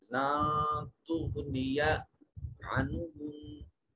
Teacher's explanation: غین صفت استعلاء کی وجہ سے مفخم ادا کیا جائے گا